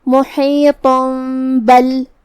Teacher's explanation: اقلاب کا معنی ہے پلٹ دینا یا بدل دینا، تو ہم یہ تنوین کو میم میں بدل کے غنہ کے ساتھ یہ حکم کو ادا کریں گے